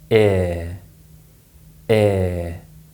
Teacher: this sound is pronounced more like a long vowel sound in modern pronunciation obviously in real conversation we don't produce the e sound first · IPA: /ɪə/